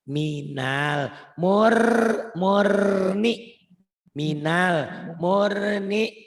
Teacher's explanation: Ini idgham. Ini nun mati ketemu ro, idgham bila gunnah, dileburkan, dimasukkan tanpa didengung, tanpa ditahan. Ya.